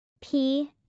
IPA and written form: saɪ (PSY)